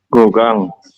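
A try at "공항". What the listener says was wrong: gogang. Gongang. Iya, bukan gogang, gongang ya. Kan haknya hilang. Jadi gongang kayak gitu. Gongang.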